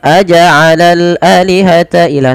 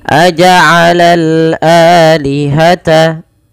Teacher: A dipanjangkan 2 harokat karena ia mad badal, adanya hamzah bertemu dengan alif.